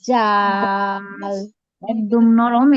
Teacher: এই যে জিহ্বার আগা সামনের উপরের দুই দাঁতের আগার সঙ্গে লাগাবো। হুম, জিহ্বার আগা সামনের উপরের দুই দাঁতের আগার সঙ্গে লাগাবো, এটা জাল এরকম উচ্চারণ হবে।